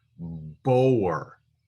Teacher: It's pronounced as a long O sound. So this would be pronounced boer, and the shva would be silent. Sometimes the shva is pronounced, but it's pronounced quickly, and sometimes it's not pronounced at all.